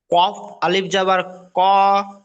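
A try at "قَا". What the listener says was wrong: আরো টানেন, রাখে টান, ক, এই দেখেন,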